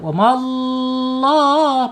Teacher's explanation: Lam jalalahnya dibaca tebal karena apa? Karena sebelumnya harakatnya fathah. Wamallah. Penekanan huruf lam yang bertasyid.